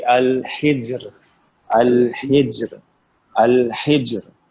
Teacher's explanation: ہا کے نیچے کیا ہے, زیر, تو را کیسے پڑھی جائے گی, پتلی پڑی ہے, باریک پڑھی جائے گی